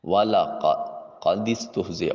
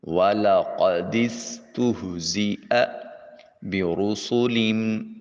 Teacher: والا قد استہزئ، واو کی ادائیگی کے وقت ہونٹوں کو گول کیا جائے گا، قاف کو اقصی حلق سے، قاف کو حلق کے کوے اور زبان کی جڑ آپس میں ملے تو قاف ادا ہوتا ہے، موٹا اور پر کر کے ادا کریں گے۔ دال کو سین سے ملاتے ہوئے سیٹی کی آواز آنی چاہیے، حرف صفیریہ ہے۔